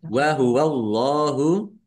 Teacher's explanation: Allahnya dibaca tebal. Karena harakat di depannya fathah. Lam fathah berdiri mad thobi'i panjang dua harakat.